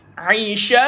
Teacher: Dan shin jangan lupa ada angin berhamburan, angin dia ada sifat hams dan juga sifat tafashi.